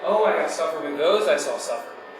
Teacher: there's this Rising tone at the end of all the words